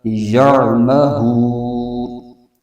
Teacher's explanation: وقف کی صورت میں نون کی جو حرکت ہے زبر وہ ختم ہو جائے گی، نون ساکن ہو جائے گا